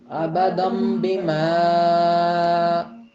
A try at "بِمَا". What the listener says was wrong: ابدم بما کیا فرق تھا کہ بیما جو ہے اس کی آواز بیما کی بجائے بیما ہو گئی، یعنی ناک میں نون کا غنہ کر دیا آپ نے.